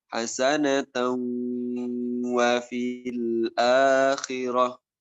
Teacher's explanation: Ketika tanwin bertemu dengan wawu, hasanatan wa fil akhirah, diidghamkan hasanatan wa fil akhirah. Kita kasih dengung dua harokat guna hasanatan wa fil akhirah, masukkan ke hidung.